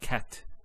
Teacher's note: a stop on the letter T so we say cat so the T doesn't have any vowel associated with it it's actually just a stop on the T so in this case we will actually push to kun there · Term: sukoon